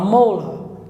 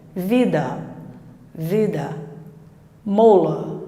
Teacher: Esse AR vai se transformar num schwa.